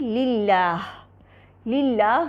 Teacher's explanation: لام الجلالہ کو مرقق ہی پڑھا جائے گا